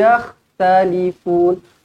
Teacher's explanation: Kha di sini, bukan yah, bukan ha pedas. Yah, dia bergetar. Talifun, fun, mat arid li sukun.